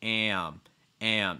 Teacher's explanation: you have an a sound plus the letter m so it's going to break into two parts